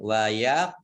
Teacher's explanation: Kemudian qaf sukun bacaan qalqalah, ya, memantul